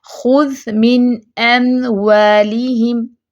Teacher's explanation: میم کے لیے پہلے پورے ہونٹ بند کریں گے، پھر واو کے لیے ہونٹ گول کریں گے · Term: میم ساکن